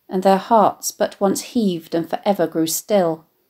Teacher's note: the alliteration of the aspirated ha sounds in hearts and heaved